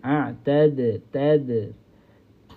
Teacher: Huruf dal ini berada hujung lidah dan hujung lidah itu bersentuhan dengan pangkal gigi kacip atas. Ha kita kena rasa gigi aad tad.